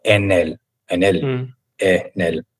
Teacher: la n va con la e después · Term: encadenamientos